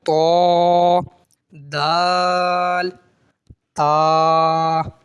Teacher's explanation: जबान की नोक को निकाले अपने बाहर और उसे ऊपर की दांतों की जड़ पर यानी अंदर वाले हिस्से प टच करें और फिर अदा करें त दाल ता · जबान की नोक और ऊपर की दांतों की जड़ से होगा